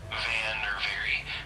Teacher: For the V sound, uh you place your top teeth gently on your bottom lip and then vibrate your your vocal cords as you push air out. So you'll hear a buzzing sound like in the word van or very.